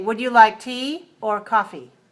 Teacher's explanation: You have two choices, and you rise on the first choice, and you fall on the second choice. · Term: choice question, choice questions